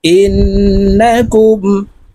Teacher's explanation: নুনের উপরে তাসদি আছে তাই এই হামজা নুনের সাথে গুন্নার সহিত পড়বো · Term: ওয়াজিব গুন্না